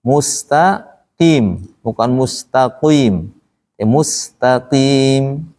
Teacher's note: Ketika dia kasroh, maka mulut kita agak ditarik untuk menghindari bunyi hui, hui, kui.